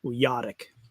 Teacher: the way he pronounced it when he taught me was a little bit of a stress on the second syllable